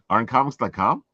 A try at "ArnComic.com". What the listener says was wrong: ArnComic.com. ArnComic.com. You keep saying it plural.